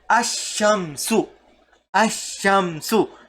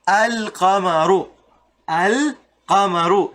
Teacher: you don't make the sound of al. The lam sound disappears. Ash-shamsu, you don't say al-shamsu. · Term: huruf al-shamsiyya